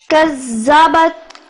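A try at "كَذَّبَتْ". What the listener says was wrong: کذبت زال کو بیٹی نرم پڑتے ہیں. کز یہ زا بن گیا تو یہ تو زال ہے تو کذبت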